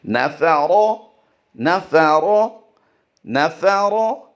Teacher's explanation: रा की अदायगी ज़बर होने की वजह से पुर होगी